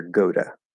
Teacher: the most likely thing that's going to happen in this particular case is the flap d plus reduction